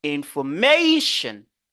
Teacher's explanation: Je dis information ou bien vous tapez la table information ou bien vous allez dire information. Vous exagérez et puis vous haussez votre ton au niveau de mation.